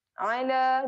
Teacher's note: Ain berada di tengah kerongkong. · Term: huruf ain